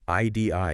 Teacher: you say the word I and at the very end, the tip of your tongue just lightly taps the roof of your mouth behind your teeth. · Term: just a tap